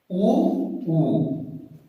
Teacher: ह्रस्व और दीर्घ ऊ, ये ओष्ठ से बोले जाते हैं